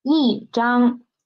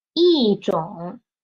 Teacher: when E is before the first, the second, and the third tone, E will change to fourth tone. It will change from the first tone into the fourth tone.